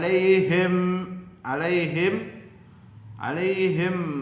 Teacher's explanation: bunyi mim tersebut dibaca jelas atau terang pada bibir dengan mulut tertutup tanpa disertai sama atau dengung agar lebih jelas perhatikan contoh-contoh dalam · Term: izhar syafawi